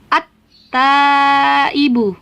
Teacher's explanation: Maka langsung tidak lagi dibaca al-ta, tapi dibaca langsung ke huruf ta, dari alif ke ta. At-taibu. Nah, tidak ada alnya lagi kan? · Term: alif lam syamsiah